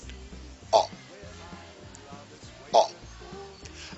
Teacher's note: The lips is round and the sound appears to be coming from the back.